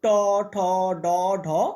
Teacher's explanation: আমাদের জিভার অগ্রভাগ মানে জিভাগ্র এটা মূর্ধাকে স্পর্শ করে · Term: মূর্ধন্য ব্যঞ্জন